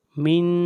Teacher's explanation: یہاں پر آواز ناک میں جائے گی، اخفا ہوگا